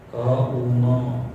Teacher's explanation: अ च उच्चारण स्थान कंठ आहे आणि म च ओष्ठ आहे. तर कंठापासून ओष्ठ एवढ्या जे उच्चारण स्थान आहे त्याच्यामधूनच सगळे वर्ण उच्चारित होतात.